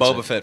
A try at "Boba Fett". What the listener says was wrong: You almost sound like you're saying Bubble Fett. Bubble Fett.